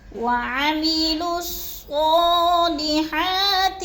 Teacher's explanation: یہ لکھنے میں آتی ہیں، پڑھنے میں نہیں آتی، تو ہم نے لام کو صاد کے ساتھ ملا کر پڑھنا ہے